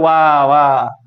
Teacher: ऊपर वाला जो दांत है नीचे वाले ओठ पर स्पर्श करता है